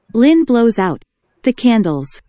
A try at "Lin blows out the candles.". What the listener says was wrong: 자, 이런 거 자꾸 소리 안 내고 있어, 끝에 가서 또. 오케이, 그래서 얘가 뭐 내고 있나요? 얘만 오 하고 우가 됐죠. Blows. 얘는 뭐 내고 있나요? 아우.